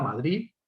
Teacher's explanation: La variante prestigiosa, la D aproximante relajada, Madrid. La pronunciación como una Z, Madrid.